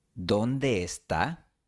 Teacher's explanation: Lo más natural es unir las dos E. El resultado puede ser una E larga con un ligero cambio de entonación.